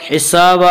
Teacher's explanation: حسابا آگے آیت ہے وقف کریں گے. 2 زبر پر وقف کرنا ہو تو ایک زبر کے ساتھ الف پڑھا جاتا ہے